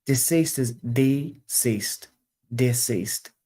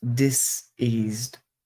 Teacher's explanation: the S sounds in deceased are all unvoiced whereas diseased the difference is you turn your vocal cords on